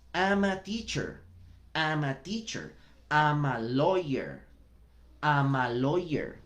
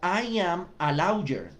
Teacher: Cuando juntamos el I con el am, la única palabra que suena es la segunda, am. Am. Y el último sonido de am es el de una consonante.